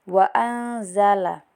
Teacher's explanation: Salah satu dari 15 huruf ikhfa yaitu za. Jadi baca samar juga.